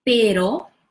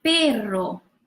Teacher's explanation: So this one is the soft R, pero, and this double R is the rolling R, perro.